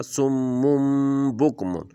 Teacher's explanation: سمن نہیں پڑھیں گے، سمم پڑھیں گے کیونکہ آگے با آ گیا ہے تنوین کے بعد، تو اس کو بھی ہم میم میں بدل دیں گے۔